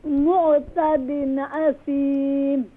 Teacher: Don't do qalqala on the ayn.